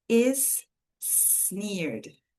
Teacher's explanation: Aqui eu tenho uma junção, né, de sons, eu tenho a mesma letra, mesmo som. Então, eu só coloco o som uma vez.